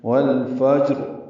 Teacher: دوسرا را ساکن ہو جائے گی، زیر ختم ہو جائے گی، والفجر اور پر پڑھی جائے گی۔ ملانے کی صورت میں را کے نیچے زیر ہے، وہ باریک پڑھیں گے، یعنی والفجری، را زیر ری پڑھیں گے۔